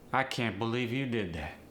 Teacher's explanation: there might be more of a rising intonation on can't and a falling intonation on that